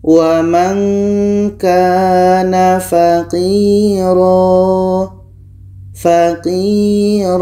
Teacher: Dan yang ketiga adalah sukun ya yang didahului oleh kasra, ini terdapat dalam Surah An-Nisa ayat 6. Qi, 'qi' ini dibaca panjang karena ada sukun ya yang didahului oleh kasra.